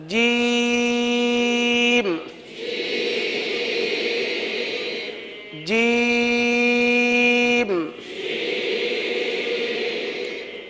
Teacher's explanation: जबान का पेट ये इसका मखर है वस्ते लिसान वस्ते तालू जबान का दरमियान और तालू का दरमियान यह जीम का मखर है सही है यहां से यह हर्फ अदा होता है जबान का